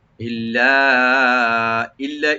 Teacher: ইল এখানে গুণনা হবে না, এখানে সরাসরি করতে হবে